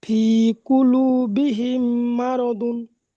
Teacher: মিম সাকিনের পরে যদি মিম আসে তাহলে মিমকে মিমের সাথে গুণনা সহ, মিমকে মিমের সাথে মিলিয়ে গুণনা করে পড়তে হবে। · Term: ঈদগামে সাফাবি